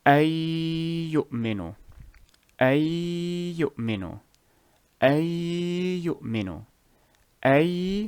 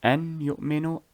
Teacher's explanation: remove the noon completely from the sound and fuse the remainder of the first word with the second word. So it would be, and with a gunna, of course.